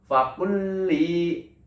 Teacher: Jadi lam yang pertamanya itu tidak dibaca, namun langsung ke lam berikutnya atau melebur istilahnya. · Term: idgham mutamatsilain